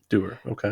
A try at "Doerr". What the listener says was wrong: And she pronounced it Doer, like sure, But a little more elongated. It's 2 R's. It's Doerr.